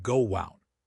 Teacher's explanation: If I say go out, my mouth moves from O to O. To make that transition, my lips naturally make a W sound. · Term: intrusive sounds